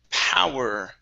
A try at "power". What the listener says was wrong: Instead of power, po, it's ow, pow, power.